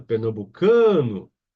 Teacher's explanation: Senão seria uma proparoxítona e deveria ter acento gráfico, né? A sílaba tônica é no can, pernambucano